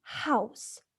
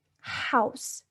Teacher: sound is articulated by obstructing the airflow in the vocal tract so when you say house it feels as if you're making your throat tighter house and it is voiceless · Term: glottal